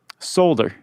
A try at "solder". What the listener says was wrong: Solder? Never heard it pronounced that way. Solder? I think the L silent, unless it's regional. Maybe regional. You say that because you're from Toledo.